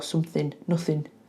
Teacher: And he doesn't say the g on the end of ing that's quite common as well.